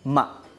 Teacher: el tono ligero, ma, como un puntito, como una pincelada